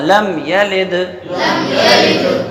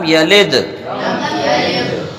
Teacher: تو دال کا مخرج جب ادا کریں گے تو دال زبان کو اس کے مخرج میں ٹکا کے نہیں رکھنا ہے بلکہ ہٹا دینا ہے، تو وہاں پر قلقلہ ہو جائے گا لم یلد۔ ہاں، دال کا مخرج کیا ہے؟